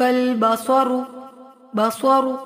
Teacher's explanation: صاد موٹا پڑھیں گے، رو موٹا پڑھیں گے